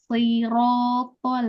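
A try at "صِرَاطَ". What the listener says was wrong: Bagus yang ini ya. Masya Allah.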